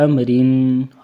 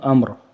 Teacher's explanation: امرن را باریک ہے، اور جب وقف کریں گے تو امر موٹا ہو جائے گا را